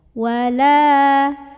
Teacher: huruf lam yang barisnya fathah ini dipanjangkan sepanjang 2 harokat saja. Wala, atau diayun ya biar sama ketukannya. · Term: mad tabi'i